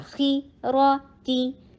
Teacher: تی سب شارٹ ہوگا، خی را تی، سب کا لینتھ برابر